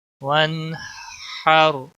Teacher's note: نون کے اوپر قلقلہ نہیں ہونا چاہیے۔ وَانْحَرْ را ساکن ہے، آلریڈی ساکن ہے تو یہ ساکن ہی رہے گا، لیکن پر پڑا جائے گا، موٹا پڑا جائے گا۔